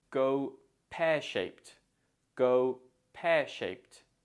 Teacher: for go pearshaped the stress falls on pair · Also, remember to use the t or t sound at the end of shaped, as shape ends in a p sound, so the ed makes a t sound